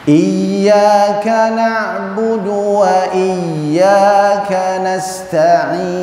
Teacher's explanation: Nggak boleh terputus suaranya karena ya itu ada sifat rakhawah atau rikhawah. Dia harus terus mengalir.